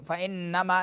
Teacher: فإنما نون مشدد ہے تو غنہ ہوگا. فإنما یجاہد لنفسہ ان اللہ لفظ اللہ لفظ نون میں نون مشدد ہے غنہ ہوگا.